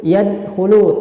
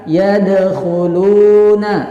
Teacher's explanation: jika antum menemukan huruf dal sukun, maka harus dibaca dengan bacaan yang memantul. Jadi yad, jangan yadkhulu tanpa pantulan, salah. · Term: qalqalah